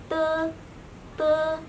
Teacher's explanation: untuk pengucapan te dan itu ujung lidahnya ditempelkan di belakang gusi dan gigi atas. Jadi, ini gigi ini ee lidah kalian ditempelkan.